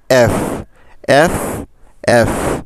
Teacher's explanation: মনে রাখবেন উপরের দাঁত আর নিচের ঠোঁটে মিলে হয় এফ